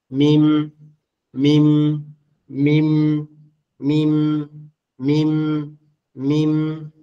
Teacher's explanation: মিম উচ্চারণ করতে গেলে আপনাকে দুই ঠোট একত্রে লাগাইতেই হবে।